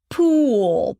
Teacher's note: The tense uh is a long vowel. It's called tense because you tense up everything when you pronounce this sound. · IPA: [IPA: puːl], puːl